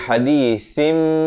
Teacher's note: Datang selepasnya ba, apa kita nak buat? Kita tukarkan daripada bunyi nun kepada bunyi mim dengan kadar dua harakat. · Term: iqlab